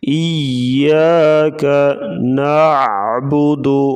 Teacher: عین کی آواز گلے سے نکالیں گے